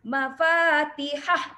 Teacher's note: bila kita waqaf, mafatihah, mati pada ha saja ya. So mad silah tidak berlaku